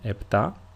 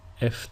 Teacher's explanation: EPA is usually pronounced in two different ways the first one is with a p sound like I pronounced it EPA and the second way is with an F sound or a f if you are in if you are Greek